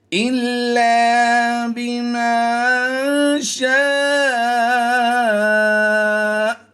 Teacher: حمزہ کی زبر کو ہم نے وقف میں جزم سے کنورٹ کیا، تو یہ بن گیا حمزہ ساکنہ، اس لیے ہم نے یہاں پر اسے جھٹکا دے کر پڑھنا ہے